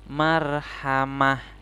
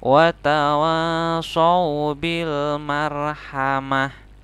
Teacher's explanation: Ta yang berbentuk ta marbutoh. Nah, ta marbutoh ini ketika berada di tempat pemberhentian atau waqaf, maka dia disukunkan dan diubah menjadi seperti huruf H. Jadi tidak marhamati tapi marhamah.